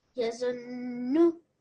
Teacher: So bit of emphasis on the noon mushaddad because of the shadda.